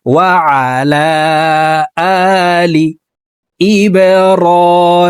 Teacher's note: আইন হরফকে হলকের মধ্যখান থেকে উচ্চারণ করব।